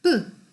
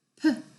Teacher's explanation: 아빠 하는 그 뿌 사운드가 아니라 푸. 공기가 같이 나옵니다. 막아놨으니까 막는 걸 열었을 때 공기가 빠져나오겠죠.